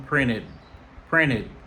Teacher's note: Après le son T, ED il gagne son id.